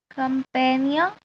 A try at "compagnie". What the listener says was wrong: compagnie. It's a sound. Compagnie. It's not come, it's co. Compagnie. Compagnie. Compagnie. We don't say the M as well.